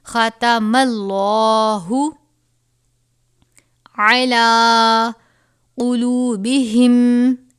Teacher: لفظ اللہ کے لام سے پہلے زبر اور پیش ہو تو اس کو پر کر کے پڑھتے ہیں